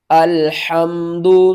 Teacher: حا کو آپ نے حلق کے درمیان والے حصے سے ادا کرنا ہے اور حا کو میم کے ساتھ ملانا ہے۔